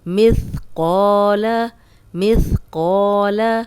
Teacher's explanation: اب قو لمبا ہو رہا ہے، الف مدہ ہے اور قاف کو موٹا بھی پڑھیں گے